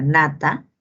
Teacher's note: el fonema es el fonema nasal, nasal alveolar sonoro